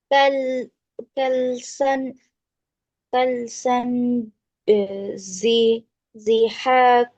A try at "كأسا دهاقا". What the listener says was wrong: এটা কি, জি নাকি দি? এটা কিন্তু দাল, হ্যাঁ? কাল, ডাল কাসরা দি। আর এটা কিন্তু কাল না, এটা হামজা, ওকে? كأسا، كأسا دهاقا.